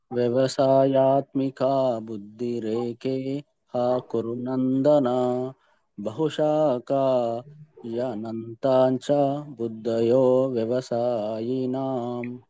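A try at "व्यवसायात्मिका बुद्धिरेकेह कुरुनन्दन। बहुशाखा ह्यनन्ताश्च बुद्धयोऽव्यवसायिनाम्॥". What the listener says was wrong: బాగా చెప్పారు ప్రభుజీ.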